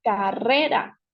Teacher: podemos identificar que la sílaba tónica es re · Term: palabra grave